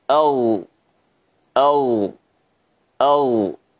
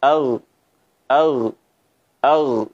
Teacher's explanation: suara bergema ya karena terangkatnya suara ke bagian langit-langit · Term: tafkhim